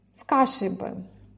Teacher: Здесь бы является как бы окончанием этого каши, то есть произносится как одно слово с кашей бы, а ударение все на каше. На бы мы не можем сказать с кашей бы. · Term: слово без ударения